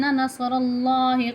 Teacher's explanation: الا ان نصر اللہ قریب، را کے اوپر زبر آ رہی ہے، آگے لام کے اوپر جو ہے کھڑی حرکات آ رہی ہے، را اور لام، را بھی موٹا ہوگا اور لام بھی موٹا ہوگا